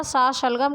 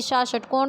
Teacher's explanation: सा शलगम का उच्चारण हम तालु से करते हैं, जबकि सा षटकोण का उच्चारण हम मूर्धा से करते हैं।